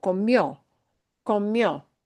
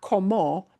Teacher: And we punch the O more, but it is an I-O